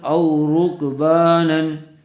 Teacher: زبر کے بعد واو ساکن آیا ہوا ہے، اس لیے واو لین کا قاعدہ ہوگا، اس کو نرم آواز سے اور جلدی ادا کریں گے